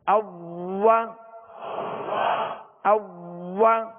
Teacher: حمزہ کی زبر میں بھی آواز اور منہ کھلے گا، اور جب واؤ کی زبر پڑھیں گے تو آواز اور منہ کھولیں گے